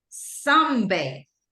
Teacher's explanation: Like the whole stress go in the sun